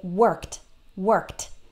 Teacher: in some words like the word work the IDI actually sounds like T